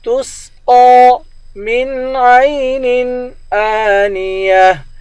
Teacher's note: قاف کو موٹا کر کے پڑھیں گے، قاف پر کھڑا زبر ہے، قاف کو ایک الف کے مقدار کھینچ کر پڑھیں گے